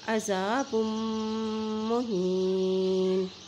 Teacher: بغضب علی غضب وللکافرین، وللکافرین عذاب مہین، اور یہاں دیکھیے با کی دو پیش کو میم کے ساتھ جب ملائیں گے، میم کے اوپر شد ہونے کی وجہ سے یہاں پہ ہم غنہ بھی ادا کریں گے